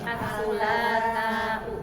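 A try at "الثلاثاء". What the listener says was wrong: Dua-duanya panjangnya. Al-Thalathau.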